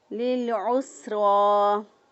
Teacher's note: سین کو باریک ادا کیا اور را کو پر پڑھیں گے اور کھڑی زبر کو ایک الف کے برابر لمبا کیا · عین کو سین کے ساتھ جب ملائیں گے تو سین کو پر نہیں پڑھیں گے بلکہ صرف را کو پر پڑھیں گے، لِلْعُسْرَى. سین کو باریک ادا کیا اور را کو پر پڑھیں گے